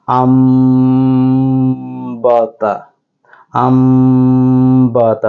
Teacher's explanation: লক্ষ্য উল্লেখ করেছি সেটা হচ্ছে নুন পরে বা এসেছে তাহলে অবশ্যই নুন সাকিন কে মিম দ্বারা পরিবর্তন করব হামজা নুন জবর আন আমরা পড়বো না যেহেতু বা এসেছে তাহলে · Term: ইকলাবের নিয়ম